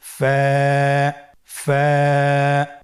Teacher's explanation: ফায়ের মাখরাজ হলো নিচের ঠোঁটের প্যাড সামনের উপরের দুই দাঁতের আগার সঙ্গে লাগিয়ে উচ্চারিত হয়।